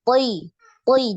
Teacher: ketika kasroh pun eh, hurufnya itu tetap tebal